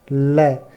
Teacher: ये वर्ण होते हैं जिनमें जिह्वा है जो मसूड़ों को छूती और है, और हवा जिह्वा के आसपास या बगल से निकल जाती है। यानी मसूड़ों को छूती है जिह्वा, और हवा है जो जिह्वा के दोनों साइड से यानी बगल से निकल जाती है। · जीभ का अग्रभाग आपके मसूड़े को टच करता है, और उसके बाद हवा है जो जीभ के दोनों साइड से निकल जाती है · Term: पार्श्विक व्यंजन